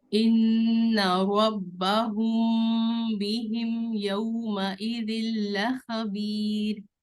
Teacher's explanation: نون مشدد پر غنہ کیجیے